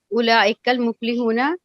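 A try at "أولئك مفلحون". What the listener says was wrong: No, 1 minute. Al-muflihuna, why you read?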